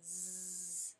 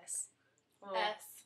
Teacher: the technical term for the difference is voiced and unvoiced